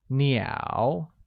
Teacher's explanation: Therefore, I have 3 birds is translated as 我有3只鸟, where 鸟, meaning birds, is pronounced with a falling rising tone